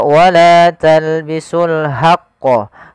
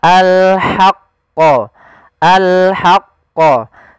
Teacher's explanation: Jangan dibaca wala talbisul haqqo, tapi dia ha posisinya adalah kita bagaimana menyempurnakan huruf ha kecil, yaitu kita mengeluarkan dari tengah tenggorokan kita ha disertai dengan adanya nafas.